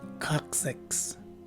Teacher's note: The phonetic spelling shows that the stress is right in the beginning of the word, and the first letter C takes a K sound, which is kind of an unwritten rule when letter C's are followed by vowels A, O, and U, and in this case, a letter O.